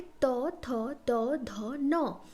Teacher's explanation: letter को बोलते हैं त वर्ग एंड आल्सो दंत्य वर्ग क्योंकि ये पांच लेटर बोलते टाइम हमारा जो टंग है वो टीथ को टच करता है